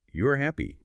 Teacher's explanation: using just your voice going up at the end